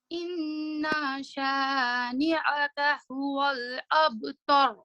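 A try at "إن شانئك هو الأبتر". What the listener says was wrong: Your ra was good, but there's another mistake that you did. Inna shani is a lighter sound than a. That's the middle of your throat, like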